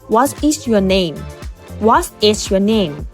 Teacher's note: มันจะมีการกดเสียงลงต่ำลง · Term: fallingintonation